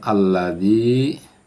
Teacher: Kemudian alladzi, itu al-samsiyah, ada alif dan lam tasdid, jadi alladzi